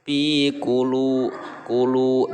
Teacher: Nah, kunya pendek, lu itu panjang, dua harokat, namanya mad tobi'i karena di situ ada waw mati yang sebelumnya berharokat domah.